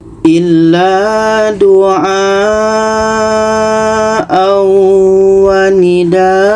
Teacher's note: Ini mad wajib muttasil panjang enam harakat.